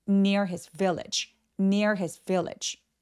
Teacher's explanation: near his village 할 때 near a village가 내용 키워드이기 때문에 중요한 키워드들의 강세 부분만 항상 요렇게 오렌지색을 처리해 드렸어요. 그래서 his가 잘 안 들리게 near his village라고 강세 외의 나머지 부분은 힘을 쫙 빼 주세요.